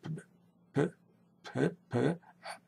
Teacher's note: because it's an unvoiced sound. You don't use your vocal cords if you say P.